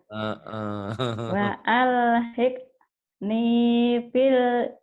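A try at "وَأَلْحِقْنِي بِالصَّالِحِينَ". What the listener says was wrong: bilnya nggak dibaca, alif lam samsiah. Bis. Kan alif lamnya tak dibaca, nggak ada tanda baca. Bis solihin.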